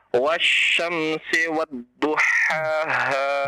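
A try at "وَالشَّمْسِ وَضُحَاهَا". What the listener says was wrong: Coba perhatikan mana yang bersyiddah, mana yang tidak ya. Nah, kenapa ditekan-tekan semuanya?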